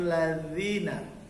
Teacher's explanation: ujung gigi dengan ujung lidah, za ladzina